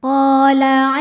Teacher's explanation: sebab ada Alif yang sebelumnya berharakat fathah maka cara bacanya qof dipanjangkan dua harakat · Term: Mad Thobi'i zohiri